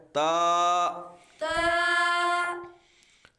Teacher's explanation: ये हरूफ नित है जबान की नोक और ऊपर के दांतों की जड़ से अदा होता है · اس کو تے نہیں پڑھنا۔ تا یہ حروف نطعیہ ہے، زبان کی نوک اور اوپر کے دانتوں کی جڑ سے ادا ہوتا ہے، تو اس کو تے نہیں پڑھنا بلکہ پڑھنا ہے تا۔